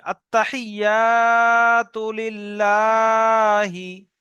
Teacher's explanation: আত্তাহিয়াতু লিল্লাহি। এখানে ইয়া আলিফ জবর ইয়া টান হবে, বাকি কোথায় টান নেই